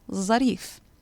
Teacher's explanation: the va turns into a sound that doesn't actually exist in the arabic alphabet at all and that is a sort of emphatic zine